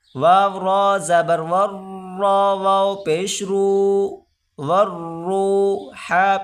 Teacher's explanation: الف اور لام آپ کو نظر آ رہے ہیں، یہ نہیں پڑھے جائیں گے۔ واو کو سیدھا را کے ساتھ ملا کر پڑھیں گے